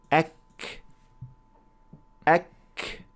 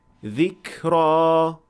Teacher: We should also notice that when the Arabic kaf is produced, there is a slight gush of air or breath that is produced along with it. We call that hems, and this is most clear when kaf is in sukun position.